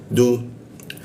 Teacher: Du itu di ujung lidah bertemu gigi dia.